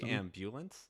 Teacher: we would stress the initial syllable which is sort of like the native germanic style